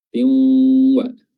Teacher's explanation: Di sini dia bertemu dengan huruf waw, adalah idgham bi gunnah, ya, memasukkan hurufnya dengan gunnah, dengan dengung